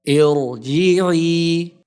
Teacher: Here the Ra is read heavily because it comes directly after Hamzatul Wasl.